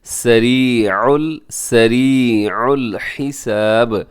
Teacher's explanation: سریع الحساب، حساب اس میں کیا ہا کا خیال رکھتے ہوئے آخر میں با ساکن ہوگا، اور جب ساکن ہوگا تو با قلقلہ ہو جائے گا